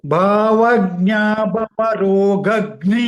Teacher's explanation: The second line, second word, second line you chant again with focus on the letters in the second word. Like bha is mahaprana, the first ga is alpaprana, and the last letter in the second word is gha mahaprana